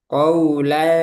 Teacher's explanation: Karena sa ini huruf istifal. Tipis.